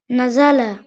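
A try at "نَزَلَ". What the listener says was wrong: নাজা, নাজা টান হবে না, হরকত উচ্চারণ নাজালা, নাজালা।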